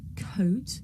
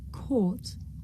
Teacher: difficult to tell the difference between the diphthong O and the long vowel OR